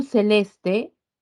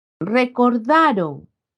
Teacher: La mayor fuerza de voz se halla en la penúltima sílaba. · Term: Palabras graves o llanas